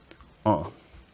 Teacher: english speakers or maybe a bit french is because it's nasalized it's pronounced with some of the airflow directed out of the nose rather than the mouth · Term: nasalised